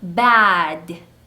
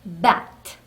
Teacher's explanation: 네, 그래서 BAT 단어와 BAT 단어의 소리를 구분할 때 물론 이 끝소리 D의 소리와 T의 소리가 다른 것도 있지만 모음의 길이로도 분간할 수가 있습니다. 자, 읽어보면 bad, bat 이렇게 다르게 읽게 되어 있어요. · 울리는 소리 또는 떨리는 소리로 단어가 끝나면 모음 소리를 길게 가져가고 새는 소리로 단어가 끝나면 모음 소리를 짧게 가져갑니다.